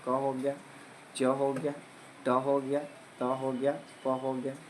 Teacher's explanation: इसमें जो आपका जो कंपन होता है वह कम होता है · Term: अघोष